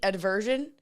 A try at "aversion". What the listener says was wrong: Aversion? Aversion. Why are you putting a D in there?